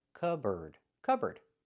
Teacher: It's pronounced cupboard. So, the P is silent.